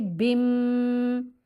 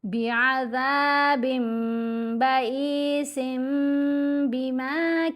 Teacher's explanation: اب ہم نے با 2 زیر بن میں جو نون کی آواز ہے اس کو میم کی آواز میں بدل کر پڑھنا ہے اور ساتھ غنہ بھی کرنا ہے. بعذاب بن نہیں پڑھیں گے، بم. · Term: اقلاب